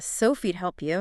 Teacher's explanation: Sophie would help you gets crushed down to Sophie'd help you.